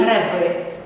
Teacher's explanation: у слові греби ненаголошений е наближається у вимові до и